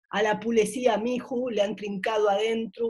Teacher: El gallego articula la O igual que la U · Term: acento gallego